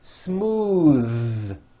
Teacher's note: another weather northern and now at the ends of words smooth believe it or not the th sound in smooth is voiced most foreign speakers say this word incorrectly they say smooth with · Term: voiced TH